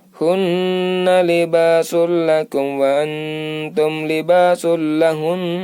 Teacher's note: Cara mewakafkannya adalah suara hun, ditekan dan ditahan 2 harokat.